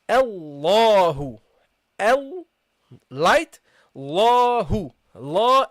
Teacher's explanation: until now, the Hamza and the lam are light letters. So don't make it heavy.